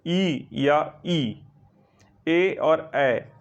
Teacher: जिह्वा के आगे के भाग से जिसका उच्चारण होगा वह जो है अग्र स्वर कहलाएगा